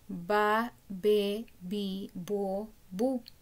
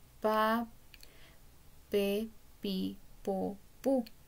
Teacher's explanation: no hay vibración de las cuerdas vocales · índice en la garganta y decimos ba be bi bo bu se siente la vibración de las cuerdas vocales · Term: fonema p, fonema B